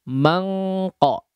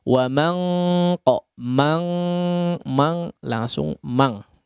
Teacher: ketika diikhfakan jangan berubah suara mau langsung saja bunyi angnya.